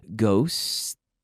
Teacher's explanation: T sound and I keep blowing the air out and then I keep blowing the air out and I move my tongue back away from my teeth to return to the S sound